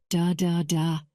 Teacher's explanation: noticing how his tongue touched the roof of his mouth just behind his teeth